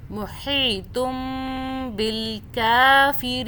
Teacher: ساکن میم کے آگے با آ جائے تو اس میم پہ ہم 2 سیکنڈ کا غنہ کرتے ہیں